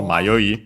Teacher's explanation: So the verb is accented, so it's the continuative form also used as a noun, accented on the last syllable